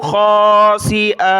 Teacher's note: دو زبر کی تنوین پر جب وقف کریں گے تو الف کے ساتھ ہوگا